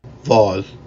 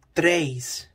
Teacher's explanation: After stressed vowels before S at the end of a syllable, a consonant sound Y is inserted.